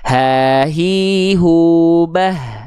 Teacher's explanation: dia dilafalkan dari bagian namanya pangkal tenggorokan atau aqsal halqi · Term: H besar